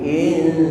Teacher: nun mati ketemu huruf ta, ikhfa aqra, suaranya suara n, bukan ing tapi in